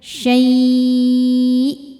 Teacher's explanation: Dan setelah kita manjangin, tekan ke hamzahnya pakai nabr syai. Naikkan intonasi suara agar hamzahnya terbawa. · Maka jika berhenti syai' ini boleh panjang 2, 4 atau 6 harokat asal konsisten dalam sekali duduk. Dan setelah kita manjangin tekan ke hamzahnya pakai naber. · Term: mad lin